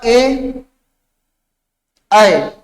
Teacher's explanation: ए ऐ को हम क्या कहते हैं, कंठ तालव्य। जब इनका उच्चारण करते हैं तो मुख के साथ साथ हमारी जीवा जो है वो तालु को स्पर्श करने का प्रयास करती है